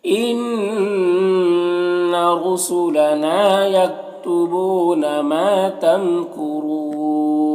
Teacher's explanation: इन्ना नून मुशद्दद गुन्ना होगा, रॉ को ऊपर पेश है, रॉ को पुर पढ़ेंगे। ना में अलिफ मद्दा है, एक अलिफ के बराबर खींचेंगे।